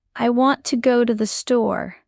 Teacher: want, go, and store are strong. But to, and the become soft, almost invisible.